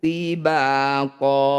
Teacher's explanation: Nyiwat itu artinya pengganti. Bunyi fathah tanwinnya kita ganti jadi fathah panjang. Ya, hilangkan garisnya 1 ketika dihentikan.